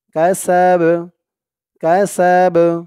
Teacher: সিন বা জবর সাব, সাব, এই বাটা কলকলার হরফ হয়ে যাবে যখন এই বার উপর থেকে এই জবরটা সাকিন হয়ে যাবে, তখন এই বাটা কলকলার হরফ হয়ে যাবে, একটু ধাক্কা দিয়ে পড়তে হবে